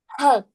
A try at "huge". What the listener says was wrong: Let's say huge, not hug. Huge.